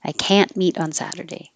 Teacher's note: it will sound like can positive but if you hear the vowel ah it's negative